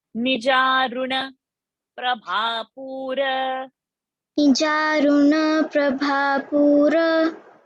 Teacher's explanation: So ni is also short and ru is also short. So you have to say fast.